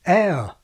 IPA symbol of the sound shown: ɛə